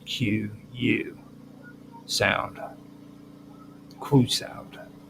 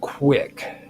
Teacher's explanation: labial and velar features happening at the same time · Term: labio valor consonants